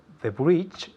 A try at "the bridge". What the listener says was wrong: The bridge, not the breach. The bridge. Es una I corta. The bridge.